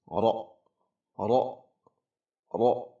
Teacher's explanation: Setelah qalqalah huruf qaf sukun langsung ra. Huruf ra tafkhim tebal lalu disangkutkan ke hamzah sukun